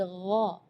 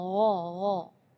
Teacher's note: tapi kalau huruf ghain itu dari bagian tenggorokan ya. Jadi gho.